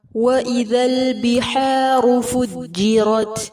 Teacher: حا کو وسط الحلق سے ادا کریں گے